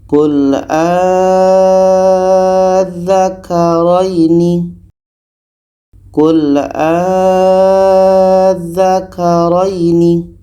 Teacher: Mad bertemu tasdid nah ini tasydidnya Jadi cara bacanya a ini kita panjangkan enam harakat baru masuk ke huruf yang ada tasydid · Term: Mad bertemu tasydid, mat bertemu tasydid